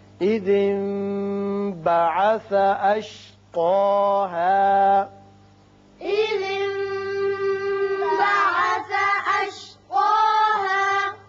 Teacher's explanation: یہاں نون ساکن کے بعد با آ رہا ہے، یہاں اقلاب ہوگا